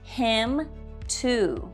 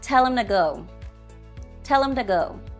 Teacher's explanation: the grammatical words him and to are unstressed and have a weak form when pronounced inside a sentence